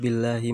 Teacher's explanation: Bi itu mad tabi'i sebab huruf ya di kasroh, dibacanya panjang satu alif atau dua harokat